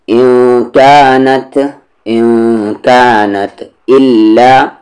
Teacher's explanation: نون ساکن کے بعد کاف ہے تو اخفا ہوگا